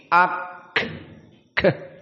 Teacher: Di mana di sini ada suara yang bocor. Suara yang keluar di saat disebutkan kaf. Contohnya seperti di sini ak keluar. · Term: hams